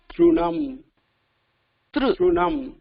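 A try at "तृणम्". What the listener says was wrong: நீங்க சொல்றது த்ரு உங்க லிப்ஸ் மூவ் பண்ணாம சொல்லுங்க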